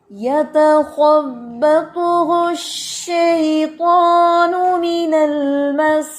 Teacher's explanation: شین مشددہ ہے تو شین 2 دفعہ ادا ہوتا ہے، اس لیے اس میں ہمس بھی ہے اور اس میں شدت بھی ہے